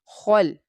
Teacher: خا لام فتحہ خل، خا مستعلیہ لیٹر ہے، بولڈ لیٹر ہے، اس لیے اس کو تھکر ٹون میں پرناؤنس کریں گے